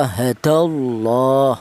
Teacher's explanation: lafal Allah ini didahului huruf yang berharakat fathah ini dibaca tafhim atau tebal